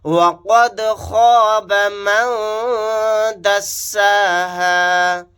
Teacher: قاف کو موٹا یعنی پر پڑھیں گے، خا کو بھی یہاں پر موٹا یعنی پر پڑھیں گے